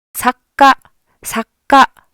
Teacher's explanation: 크 라고 발음하는 것이 아니라 잠깐 목구멍을 닫아 두는 거에요 · 그러면서 그 발음을 앞잡이 받침으로 확 넣어서 짧게 발음한 것이 아니라 한 박자를 목구멍을 닫아 준다 라고 생각하시면 되요 · k 발음과 같은 받침이 앞에 생긴다고 생각하시면 되요